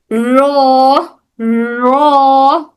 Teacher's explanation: इस्तिलाही माना क्या है इसका, हर्फ को अदा करते वक्त जुबान की नोक, हर्फ को अदा करते वक्त हमारी जो जबान की नोक है, सामने वाला हिस्सा टिप ऑफ अवर टंग, जबान की नोक में हल्की सी कपकपाहट पैदा होना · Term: सिफत तिकरार